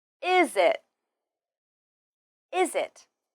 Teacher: we often link the final z sound of is with the beginning I sound of it